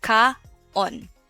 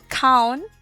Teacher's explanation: in the Waray language, we don't combine vowel sounds. We read it separately, like very syllabic.